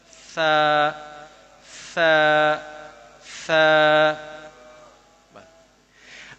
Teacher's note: زبان کی نوک کو اوپر والے دانتوں کی نوک کے ساتھ لگا رہے ہیں، سا سا سا. اچھا جی، تا تو، سا سا سو، سا سا سو.